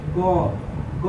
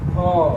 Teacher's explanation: देखिए ग, घ, दोनों में देखिए बोल कर देखिए, आपको पता चल जाएगा कि ग में कम हवा निकल रहा है, लेकिन घ, घ, ग, घ में अधिक हवा निकल रहा है कि नहीं। तो ग क्या हो जाएगा, ग भी हो जाएगा अल्प प्राण, घ हो जाएगा महाप्राण।